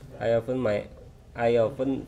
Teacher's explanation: and then ya often itu bacanya bukan often tapi en en t-nya samar bukan samar memang hilang